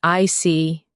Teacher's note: When you show understanding with "I see," your tone drops slightly to show calmness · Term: intonation